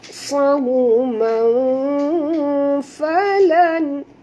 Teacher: Okay, tanwin bertemu dengan fa. Ya, jadi kita kena sorokkan bunyi tanwin ke dalam fa disertai dengung 2 harakat. Ikhfa hakiki.